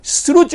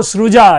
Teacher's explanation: च जो है ज में कन्वर्ट हो रहा है